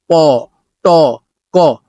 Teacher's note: এই বাতাস বের হলেই সেগুলো অ্যাসপারেটেড হবে, এছাড়া কিন্তু অ্যাসপারেটেড হচ্ছে না। আমরা যদি বলি প, ট, ক, তাহলে অ্যাসপারেটেড হবে না। শুদ্ধ উচ্চারণ এটাই যে আমাদেরকে অ্যাসপারেটেড করতে হবে, মানে বাতাসটা বের করতে হবে।